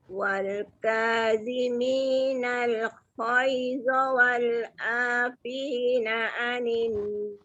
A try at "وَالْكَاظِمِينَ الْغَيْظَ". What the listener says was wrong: Tak berapa jelas bunyi ghai tu dengan wal'a tu. Wal kaziminal ghaidha wal nal ghai tak ada wa.